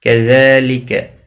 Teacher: ذال کے اوپر کھڑی زبر ہے، ایک الف کے برابر کھینچ کر پڑھیں گے